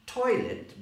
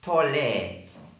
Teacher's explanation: So the oi becomes an o